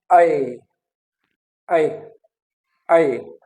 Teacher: आई में द जो है tongue is that is lowered और जो माउथ है दैट इज ओपन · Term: लव ओपन फ्रंट